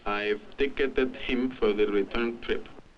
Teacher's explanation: the Spanish speaker uses more regular rhythms giving all his syllables more equal value and creating a staccato like effect I've died him for the return return trip the crowding together